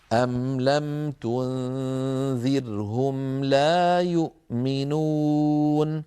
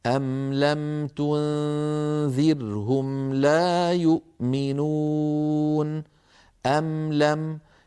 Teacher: فالميم هنا مظهرة فيها غنة ناقصة